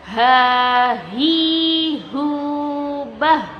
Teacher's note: huruf H, dia sama kayak huruf hamzah, keluarnya dari tenggorokan yang bawah